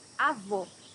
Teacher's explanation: Here you have a closed O.